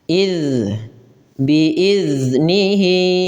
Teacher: Termasuk rakhawah yang di mana dia mengalirnya suara dan dia termasuk eh maaf termasuk jarr yang dia tertahannya nafas ya tapi dia mengalirnya suara rakhawah ya.